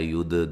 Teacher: دال کو ہلا کے پڑھنا ہے، قلقلہ ہے